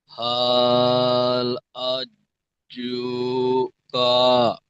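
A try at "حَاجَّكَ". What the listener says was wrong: মাশাআল্লাহ, এখানে কাটে একটু টান হয়ে যাচ্ছে। তাহলে উচ্চারণটা হবে হাজুকা।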